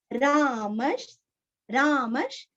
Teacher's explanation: विसर्ग का उच्चारण श, आधा श। क्यों आया है श, क्योंकि आगे श्र आया है।